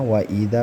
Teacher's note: Wa idza panjangnya dua harakat, mad tabi'i alif.